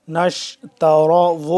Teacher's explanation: را کو پر کر کے پڑھیں گے